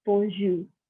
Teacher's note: I do not pronounce the R at the end. You feel like there's going to be an R, but you don't really pronounce it.